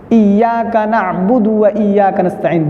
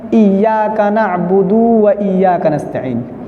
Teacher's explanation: دال پر پیش ہے، حرکت ہے، کھینچنا نہیں ہے، لیکن ہم بعض حضرات ایسا پڑھتے ہیں ایاک نعبد و ایاک نستعین، یہ حرکت ہوگی۔